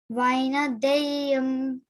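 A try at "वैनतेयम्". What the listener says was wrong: Not deyam. Teyam. Vainateyam.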